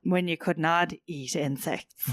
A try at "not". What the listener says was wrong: Nod eat, yeah. Nod. You're all D, no T. Such a fan of the D.